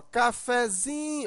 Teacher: forte é o Zin mas observa que o café de cafezinho o fé ainda é pronunciado um pouco forte não tão forte como o Zin mas também não tão fraco como o k ela é um intermediário Então essa sílaba intermediária recebe o nome · Mas no cafezinho, a sílaba mais forte é o zin. Mas observa que o café de cafezinho, o fé, ainda é pronunciado um pouco forte. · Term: Pub tônica, subtônica, sílaba tônica